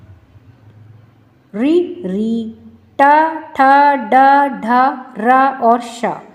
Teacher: आप जब इसका उच्चारण करेंगे तो आप देखेंगे कि ये हमारे ऊपर तालु से इसमें हमारी जीभ स्पर्श कर रही है। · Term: मूर्धन्य वर्ण